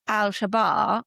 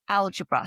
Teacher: So where it was alabar it moved to algebra so the the accent shifted from the second syllable to the first